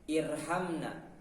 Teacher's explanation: dekat makhraj nun dan masuk pada punggung lidah, tetapi lidah tidak menyentuh langit-langit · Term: huruf ra